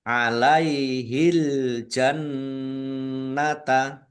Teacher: Nun tasdid dibaca ghunah atau mendengung ditahan biar tampak mendengungnya.